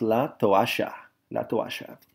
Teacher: If we were in Argentina, that double L makes a sh sound in some cases.